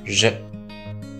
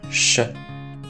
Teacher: のとして彼の名前をしっかり発音できたら、親日家であった彼も喜ぶのではないでしょうか。ジャック・シラクという名前はフランス語ではジャック・シラクと発音します。シラクの方に▁R▁の音が入っているのが難しいと感じるかもしれませんが、それ以上に肝心なのは姓、名、それぞれの最初の一音です。ジャックのジュとシラクのシュですね。実はこの二つの音はとてもよく似ていて、ほとんど同じ音です。カタカナではシに濁点がつくかつかないかで見分けますが、これを音声学では有声音と無声音という風に呼び分けます。 もちろんジュが有声音でシュが無声音ですね 。でもこの違いを除けば、この二つの音は口の中の全く同じ場所を使って全く同じ要領で発音しています。ではフランス語のシュは日本語のシとは何が違うのでしょうか。まず日本語でシと発音してみてください。この